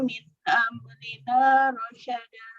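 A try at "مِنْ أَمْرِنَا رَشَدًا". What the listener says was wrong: Untuk catatannya, tadi di huruf ro ya belum tebal suaranya. Jadi ro itu ada yang dibaca tebal, ada yang dibaca tipis. Untuk ro sukun, yang dibaca tebal itu yang sebelumnya ada fathah atau dhammah. Alal ardi, nah itu tebal. Tapi kalau sebelumnya kasroh, maka dibaca dengan tipis.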